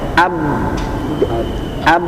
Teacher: Ab enggak kedengaran kan ya? Maksudnya tidak mengalir suaranya ya.